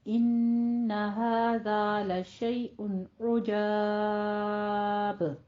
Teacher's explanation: آپ نے 6 حرکتوں برابر مد بھی کرنی ہے، اور آخر پر آپ نے اس کو ساتھ میں قلقلہ بھی کرنا ہے